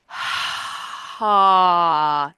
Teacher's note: Because H has no vocal fold vibration, it's mostly the sound of air getting squished between vocal folds that are closer together. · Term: H sound